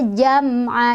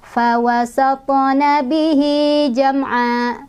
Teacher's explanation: Jadi walaupun mimnya sukun, dia tetap punya satu harokat ya. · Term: izhar syafawi